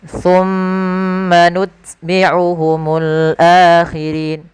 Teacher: Pada lafal thumma di sini ada bacaan gunnah, yaitu adanya mim tasydid, maka kita harus tahan, maka kita namakan dengan bacaan gunnah.